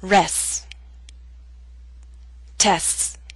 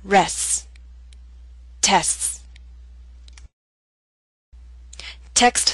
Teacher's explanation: in the final two words you need to lengthen the S sound make it long so that people can understand the words you're saying rest test